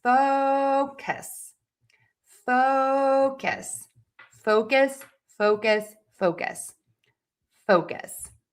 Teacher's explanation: That means it is going to be louder, longer, higher in pitch. Syllable number two will be shorter, softer, and lower in pitch.